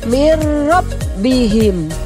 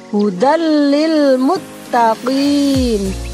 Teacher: Contohnya mirrabbihim, ada huruf nun bertemu atau berhadapan dengan huruf ro, maka nunnya tidak dibaca dengan jelas, akan tetapi melebur kepada huruf ro dan tidak boleh berdengung. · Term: idgham bila gunnah